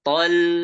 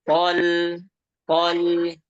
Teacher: tolnya tebal, lamnya tipis.